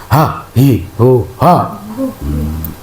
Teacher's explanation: Jadi H itu dari tenggorokan bagian bawah ya